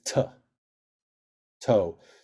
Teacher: the Sephardic way of pronouncing this letter, whether it's got a dot in it or not, is t.